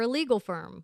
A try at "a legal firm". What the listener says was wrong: If you say that fast, it sounds like illegal firm. Enunciation.